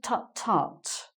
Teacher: really all it is a T sound that you make, two T's, with your tongue on the roof of your mouth. When you're annoyed about something, it's very quiet, but they would probably hear it.